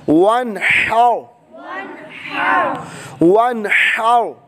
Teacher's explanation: نون ساکن کے بعد حروف حلقی میں سے حا آنے کی وجہ سے اظہار بغیر گنے کے